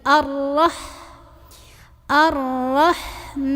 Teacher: Hamzah wasal Nah karena ini di depannya huruf lam dibacanya a lamnya enggak usah dibaca langsung tekan ke ro hati-hati jangan terlalu bergetar arro tapi Ar cukup ya arah h-nya